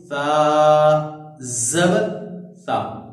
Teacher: ثا میں سیٹی کی آواز نہیں ہے